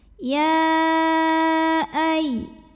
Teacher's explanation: Jadi hamzahnya ikut ke kalimat ke berikutnya ya. Maka ya dipanjangkan boleh 4 boleh 5 harokat · Artinya tidak perlu menahan bunyi ya-nya. Cukup pakai naber, agak dinaikkan intonasinya. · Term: mad jaiz munfasil